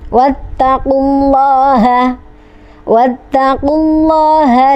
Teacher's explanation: Lafaz Allah lam jalalah ini dibaca tafkhim atau tebal atau mufakham karena jatuh setelah dhamma.